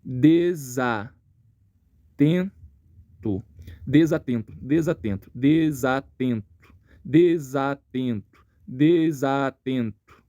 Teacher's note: Esse som do N vai para o E, nasalizando o E, e o som do S, ele vem para o A. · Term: ligação